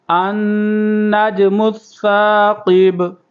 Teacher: کریں گے، النج، یہاں پر قلقلہ ہو رہا ہے جیم پر، میم کو سا کے ساتھ ملائیں گے، تشدید ہے، اور قاف کو پر کریں گے